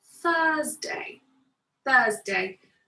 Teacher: i put my tongue in between my teeth to make that sound at the start